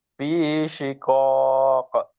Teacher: pantulkan qaf fi syiqaq